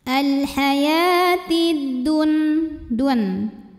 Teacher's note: Karena ada alif lam menghadapi huruf syamsiyah yaitu huruf dal. Maka alif lam tidak dibaca. Langsung diidghamkan ke dal atau disebut dengan idgham syamsi.